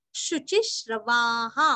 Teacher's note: शुचिश्रवाहा, शु और ची दोनों भी रस्व श्रवा, वा के आगे विसर्ग का उच्चारण यहाँ पे ह नहीं करना है, हमें यहाँ पे हा ही बोलना है। शुचिश्रवाहा, वा पूरा बोल के हा बोलना है।